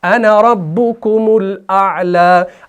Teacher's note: अलिफ जो आता है वो वसल की सूरत में ड्रॉप हो जाता है, वक्फ की सूरत में पढ़ा जाता है।